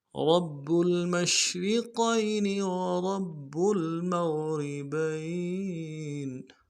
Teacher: را کو موٹا کرنا ہے، با کے ساتھ ملانا ہے، با کے اوپر تشدید زور دیں گے اور با کو آگے لام کے ساتھ ملانا ہے، رب المشرقین،